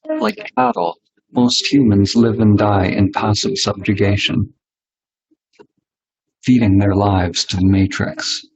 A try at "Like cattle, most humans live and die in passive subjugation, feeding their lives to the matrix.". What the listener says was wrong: Okay, feeding their lives to the matrix. Feeding their lives to the matrix. And the intonation is a bit different.